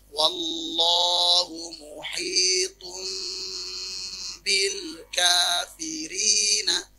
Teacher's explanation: dibaca mim dan ditahan dengungnya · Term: iklab